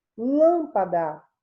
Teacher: O lã é a sílaba tônica, a sílaba mais forte